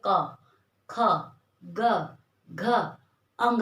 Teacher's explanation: ये तो हो गया क की आवाज कहाँ से निकलेगी, कंठ से। क वर्ग हमारा पूरा हम तब तक नहीं बोल पाते जब तक हम अपना गला नहीं खोलेंगे, मुंह बंद कर ले, यहाँ से आवाज ही नहीं निकालेंगे तो कैसे आएगी। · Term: कंठस्थ व्यंजन